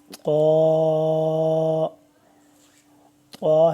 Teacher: طا، طا ہے لفظ، طا اور تا جو کل ہم نے پڑھا تھا، تا اور طا کی آواز ملتی ہے، لیکن طا جو ہے اس کو ہمیشہ موٹا پڑھتے ہیں، پر پڑھتے ہیں، تا کو باریک پڑھتے ہیں۔